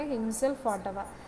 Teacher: Primary accent on the second syllable